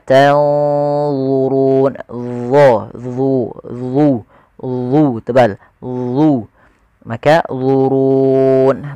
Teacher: tanzurun ada nun mati ketemu dha, ikhfa-nya langsung ke dha, agak tebal